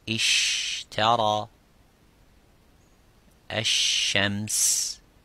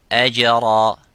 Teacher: The parts touch each other without leaving the gap. But the sheen has a gap, and that let the air slightly go.